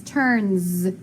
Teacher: listen to that s turns it sounds like a z